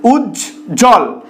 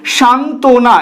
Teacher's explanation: একাধিক সংযুক্ত ব্যঞ্জনের সাথে যদি অন্তস্থ ব ফলা রূপে থাকে সেক্ষেত্রে ব অনুচ্চারিত থাকে